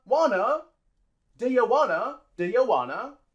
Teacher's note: t is uh not voiced but but vowel sounds are voiced so we drop the T and we say Wana